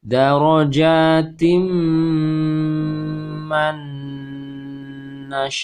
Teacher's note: nun sukun bertemu nun juga ditahan. Darajatim man nasya'u. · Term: idgham bi gunnah